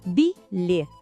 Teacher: o final lê tem um som parecido com o nosso E aberto